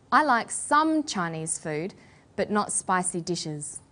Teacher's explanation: about a restricted or limited amount of something we put the stress on the word some